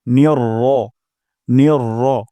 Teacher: এখানে নুন গিয়ে রর সাথে কানেক্ট হবে, জোরালোভাবে কানেক্ট হবে।